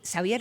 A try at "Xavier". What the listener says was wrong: Lo pronunciamos Javier, pero sí se escribe con X.